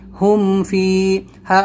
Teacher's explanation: اس میں ہمیں کچھ بھی نہیں کرنا ہے، جیسا لکھا ہے ویسا ہی پڑھنا ہے. بس فا آئے گا تو ہمیں میم کو خاص کر ظاہر کرنا ہے، اس کو دھیان دے کر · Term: اظہار شفوی